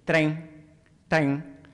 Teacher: the deletion of the final n, the nasalization of the vowel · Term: dialect feature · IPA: [trē]